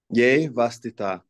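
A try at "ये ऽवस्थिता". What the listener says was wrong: There you go.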